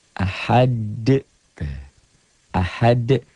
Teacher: Jadi ini tuh asalnya domah tain menjadi sukun bukan dalam tulisan tapi dalam bacaan. Ahad bacanya ada e-nya. Kayak bola yang mantul jatuh tidak langsung diam, mengeper, mengembal. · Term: qalqalah